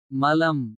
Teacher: நாவின் நுனி மேல் பற்களின் ஈற்றைத் தொடுவதால் பிறக்கும்